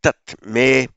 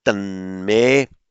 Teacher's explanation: Now, tat me, of course, by sandhi becomes tan me kshemataram bhavet.